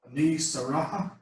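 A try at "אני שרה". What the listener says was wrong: Oh, well, not Saraha, because there's no vowel underneath the hay. Sarah. But that's Sarah's name in Hebrew, Sarah.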